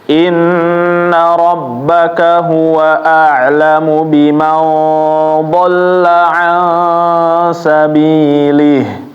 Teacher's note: Kalau dibaca sambung baru ada dua harokatnya, tapi kalau dibacanya stop maka dia mati ya, nggak ada hi-nya